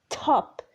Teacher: With the T, you feel like there is a puff of air. Top. This puff of air, we put it as a small h above the T. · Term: aspiration